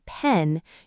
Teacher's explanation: P, like in pen, your lips pop open with a small burst of air